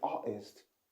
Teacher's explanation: Difficult, and also she said artist. She used the glottal stop in this word, and she didn't pronounce the T